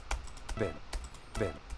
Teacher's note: weak soft eye sound listen you can barely hear this because the emphasis is on the Para